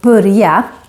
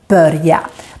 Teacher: So I have the Stockholm accent, and we have a tendency to make the vowel ö sound more like a u sound when it's followed by two consonants. So with this word, we say more börja instead of börja, but both pronunciations are correct.